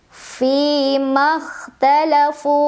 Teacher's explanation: Fi makhtalafu, fu mad tabi'i dhahiri karena ada waw sukun sebelumnya dhammah. Cara membacanya dipanjangkan fu-nya 2 harokat.